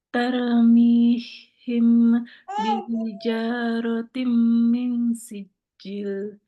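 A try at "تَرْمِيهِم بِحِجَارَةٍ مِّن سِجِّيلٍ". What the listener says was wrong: Panjang. Sijil panjang.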